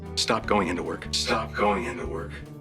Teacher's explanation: the ing in words like trying and going are often reduced to trian and goin in spoken english